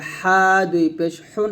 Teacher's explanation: হা গলার মাঝখান থেকে বলতে হবে